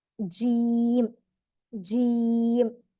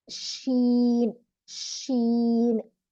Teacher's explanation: ज्यादातर हिस्सा middle part का ऊपर टच होता तो जीम निकलता, थोड़ा सा गैप रहता जस्ट थोड़ा सा जिससे हवा क्रॉस हो तो उसको शीन अदा होता